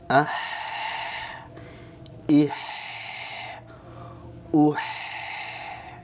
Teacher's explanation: huruf ha keluar dari tengah tenggorokan · Kalau ha ini Tengah tenggorokan dan ini termasuk huruf yang tipis